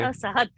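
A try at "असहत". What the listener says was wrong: Ta pronunciation has to be ta and not t,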